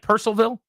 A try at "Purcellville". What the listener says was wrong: Yeah, it's like Percival. It's not like Louisville. I don't even know if there's an L there.